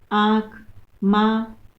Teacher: लेकिन अनुनासिक में हम दोनों का, नाक का भी प्रयोग करते हैं और मुख से भी हवा को बाहर निकालते हैं। दोनों में समान रूप से बाहर निकाला जाता है।